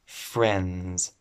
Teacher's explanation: There's no D sound here.